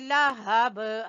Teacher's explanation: हा गले के आखिरी हिस्से से